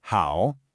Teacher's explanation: it's a full dip and rise, how. But in real flowing speech, you'll almost always just hear the half-third, which is just the low dipping part, without the rise at the end. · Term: third tone